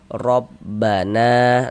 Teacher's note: E jadi huruf ro kalau memiliki tanda baca fathah atau tanda baca dhammah, maka huruf ro dibaca tebal, dibaca tabkhim. Sehingganya pangkal lisan kita naik terangkat ke atas ketika kita mengucapkannya. Tebalkan huruf rnya. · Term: tafkhim